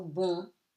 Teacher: ON before a consonant gives you a nasal sound on